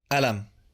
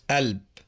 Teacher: The consonant qa is normally replaced with a glottal stop in Egyptian Arabic.